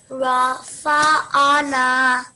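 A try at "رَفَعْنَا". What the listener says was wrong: So it is not Rafa'ana, it is Rafa'na.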